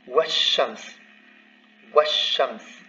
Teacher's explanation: both the vowel of liaison and the lam disappears because it's preceded by something